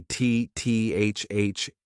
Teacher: Get your tongue in between your teeth, and this is a voice TH